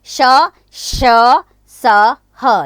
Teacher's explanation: इन व्यंजनों का उच्चारण करते समय हवा के तेज गति से मुख से रगड़ खाने के कारण ऊष्मा यानी कि गर्मी सी पैदा होती है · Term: ऊष्म व्यंजन